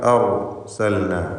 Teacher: ഈ പദത്തിലെ ലാം ഇൽഹാർ ചെയ്യപ്പെടുന്ന ലാമാണ്